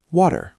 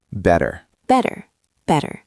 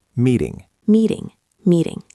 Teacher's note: It is not a hard d like dog. It is a very light tap of the tongue on the roof of the mouth.